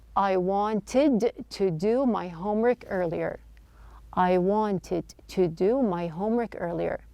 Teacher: Now notice that the T sound in the word wanted, the T is dropped. This is not an uncommon practice when the T follows an N.